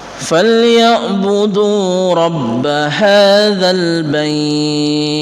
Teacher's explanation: Dan yang terakhir sama, yaitu mad layin. Karena berada di akhir ayat posisinya, maka kita panjangkan, lebih panjang dari biasanya.